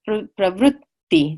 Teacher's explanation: Asthivaha Srotas, Ati Pravritti, double T, Pravritti. There's a little bit of a lingering on the T.